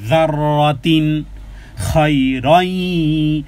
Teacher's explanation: তানবিনের পরে খ, খ হলো ইজহারের অক্ষর, স্পষ্ট করে পড়তে হবে। যাররাতিন খায়রাই, খায়রাই, কেন এখানে ইদগামে বা গুন্না, তানবিনের পরে ইয়া এসেছে, ইয়া মিম নুনের চারটির যে কোনো একটা আসলে গুন্না সহকারে মিলিয়ে পড়তে হবে।